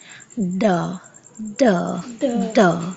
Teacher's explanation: जब हम डा साउंड को प्रोनाउंस करते हैं तो हमारे जो गले में थ्रोट में वाइब्रेशंस होती है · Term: वॉइस साउंड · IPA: /d/